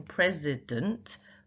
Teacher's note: So in president, the last syllable is quite unstressed.